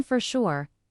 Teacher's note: the R in for connects smoothly to sure